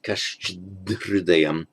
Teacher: the dh plus h, I'm talking here about pure consonantal h, hridaya, they merge to become a double DH